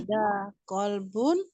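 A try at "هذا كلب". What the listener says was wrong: Kalbun sama kolbun beda ya, awas. Kalau kolbun hati ya.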